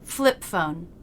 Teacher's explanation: Here we stop the sound with the lips in position for the P, then go straight into the F consonant without releasing the P.